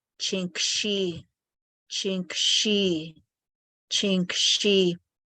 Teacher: The S turns into an SH